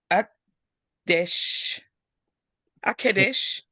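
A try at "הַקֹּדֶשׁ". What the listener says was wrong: Yeah, but there's an O right there. Don't leave that out. Akodesh.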